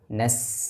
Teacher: Ain ada huruf nun tipiskan na kemudian ketemu dengan Sin sukun Jelaskan aliran nafas aliran suara suara tajam atau yang dinamakan dengan sifat safir pada huruf Sin